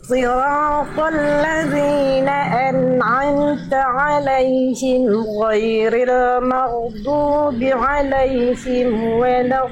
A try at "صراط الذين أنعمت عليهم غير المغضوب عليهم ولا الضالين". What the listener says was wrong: Udah bagus Bunda, cuman di yang kedua tadi dotnya kurang ngalir sedikit. Dot tasdidnya. صراط الذين أنعمت عليهم غير المغضوب عليهم ولا الضالين.